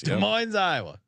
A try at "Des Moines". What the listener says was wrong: I believe the S. I believe the S is silent. Des Moines. Des Moines.